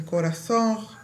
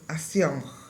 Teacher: reducción de nasales finales, como nasalización en las vocales, como por ejemplo en la palabra corazón dicen corazón, en la palabra acción dicen acción.